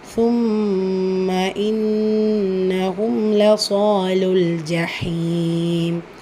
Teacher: நூன் முஷததாக இருக்குது. குன்னா செஞ்சு ஓதணும்.